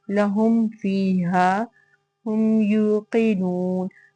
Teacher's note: تو تمام مثالوں میں ہم نے یہی دیکھا کہ میم ساکن کے بعد اگر حرف با یا میم کے علاوہ کوئی بھی حرف آ جائے گا تو ہم میم ساکن کا اظہار کریں گے، اس کو فوراً سے ادا کریں گے. نہ تو اس میں غنہ ہوگا نہ اخفاء ہوگا، بلکہ اس کو میم کا اظہار کرتے ہوئے فوراً سے ادا کر دیں گے